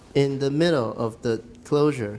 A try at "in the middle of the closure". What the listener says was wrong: Okay, don't go down for middle. You have a lot of falling intonations, which makes me think you're at the end. But if you're not at the end, you shouldn't fall.